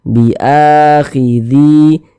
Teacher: Makanya ini dia mad badal panjang 2 harokat.